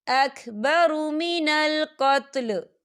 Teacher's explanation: या देखिए आपको छोटा सा तोई नज़र आ रही है, तो ये वफ़े मतलब की अलामत है, तो यहाँ पर ठहरना बेहतर है। वफ़ की सूरत में लाम साकिन हो जाएगा